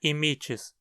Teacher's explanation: Veja como o i na penúltima sílaba é longo, o que faz com que a pronúncia seja imites e não imites.